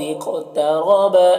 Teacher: قد اقترب قاف حروف مستعلیہ میں سے پر پڑھیں گے، اور یہاں پر بھی قاف حروف مستعلیہ میں سے پر پڑھیں گے، اور قاف یہاں پر جزم ہے تو یہ حروف قلقلہ میں سے بھی ہو گیا تو قلقلہ بھی کریں گے۔ را کے اوپر زبر ہے، را کو پر پڑھیں گے